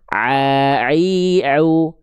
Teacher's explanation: Kalau ain dari tenggorokan tengah, a i u.